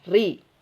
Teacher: Tapi dalam keadaan kasrah dia tipiskan ri.